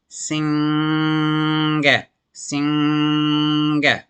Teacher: when you pronounce the NG, you'll feel the sound vibrate within the pharynx area. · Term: NG sound